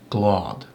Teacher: it adds a slight breath of air almost between the G and the L